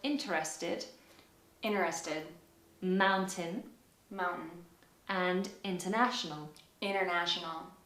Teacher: sometimes the t sound is omitted altogether